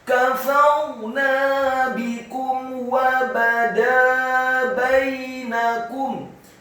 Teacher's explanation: mim yang sukun bertemu dengan huruf wawu yang fathah, pembacaannya adalah izhar syafawi, dibaca jelas, tidak boleh didengungkan